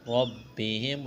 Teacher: را کو موٹا کرنا ہے، با کے ساتھ پلس کرنا ہے، ملانا ہے، با میں سختی کریں گے۔